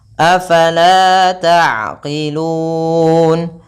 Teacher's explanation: Kemudian, taqilun. Ain memiliki sifat bainiyah, artinya suara tersebut tidak sepenuhnya terblokir maupun sepenuhnya dilepaskan.